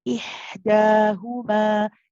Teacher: The ha is a rakhawa letter, which means that we stay on it. · The ha is from the middle of the throat.